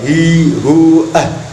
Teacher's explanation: Makhrajnya huruf H adalah dari tenggorokan yang paling dalam atau bawah.